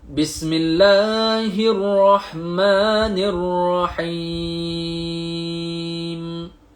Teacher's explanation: kalau hujung tu huruf mim, kita berhenti. Mulut tu kena rapat.